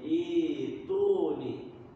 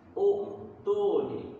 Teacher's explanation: apa namanya rumus seperti itu rumusnya Bagaimana kembali lagi ke garib dia menghilangkan bunyi Hamzah dan menghidupkan bunyi Alif dengan kasrah